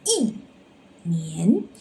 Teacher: And the second one is before the second tone, which is 年. We need to change it to the fourth tone